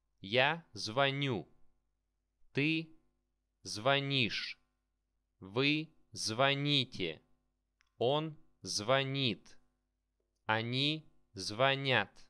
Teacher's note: the stress is on the last syllable